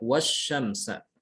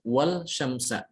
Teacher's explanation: Lam sukun ketemu dengan shin. Maka dibacanya wasyamsa. Bukan wal syamsa, tapi wash, langsung ke shin. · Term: lam syamsiyah